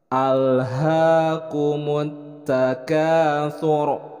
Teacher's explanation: Nah, ra di sini diwaqafkan, kemudian sebelumnya ada harokat dhammah. Maka ini dibaca ra tabkhim, dibacanya dengan tebal.